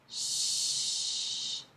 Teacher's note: For the sh, it's the more the central or the front central part of the tongue that moves close to the hard palate. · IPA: /ʃ/